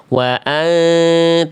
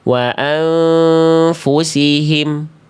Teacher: samar dengung dua harakat bersiap-siap melafalkan huruf berikutnya